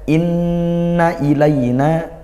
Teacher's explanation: inna nun bertasydid dibaca dengung ghunah hukumnya dengungnya lama